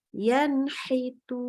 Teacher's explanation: Ini kita baca nunnya jelas. Nunnya jelas, nggak pakai dengung-dengung, nggak pakai samar-samar. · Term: idhar halqi